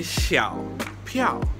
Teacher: Xiao is third tone, piao is fourth tone